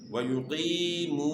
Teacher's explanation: اور یہاں جو ہے یا مدہ بھی ہے، وَيُقِي آپ نے کھینچنا ہے، یا ساکن سے پہلے زیر ہو تو یہ یا مدہ ہے، اس کو آپ نے ایک الف کے مقدار کے برابر آپ نے کھینچنا ہے